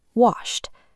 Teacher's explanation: If the base verb ends in a voiceless sound, like the sh and wash, the ending sounds like a t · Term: hard t